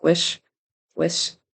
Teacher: the final CH sound on witch sounded a little bit like an S